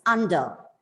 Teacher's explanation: as the word ends with the letter R, it goes silent. It is under.